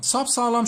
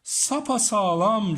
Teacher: Sap ve sağlam ifadeleri birleşti. Hiç olmayan bir a sesi arada türemiş oldu. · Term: ünlü türemesi